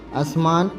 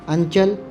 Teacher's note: دکنی اردو میں بڑے مصوتوں کو چھوٹے مصوتوں میں بدل دیا جاتا ہے، جیسے اسمان یعنی آسمان، انچل یعنی آنچل۔